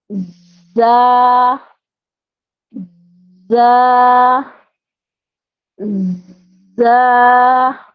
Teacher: زا سختی سے ادا ہونے والا حرف ہے. اس میں سیٹی کی آواز آتی ہے.